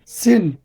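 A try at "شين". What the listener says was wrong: সিন হবে না, এটা সিন না, দুইটাই সিন হলে তো দরকার নেই তো। দেখেন, একটা সিন, একটা হচ্ছে শিন, তালে বসা থেকে, শিন, শিন, শিন। শব্দ আসবে এখান থেকে, জিহ্বার মধ্যখানটা টালুতে লাগবে, শিন।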